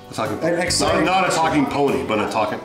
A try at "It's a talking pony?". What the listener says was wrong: Like an excited question. Say it like it's an excited question.